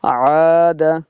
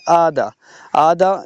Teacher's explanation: آدھا یہ حمزہ ہو جاتا ہے تو پھر یہ غلطی ہو جائے گی، تو ہم نے عین پڑھنا ہے